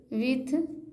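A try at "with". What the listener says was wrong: था नहीं, द, विद,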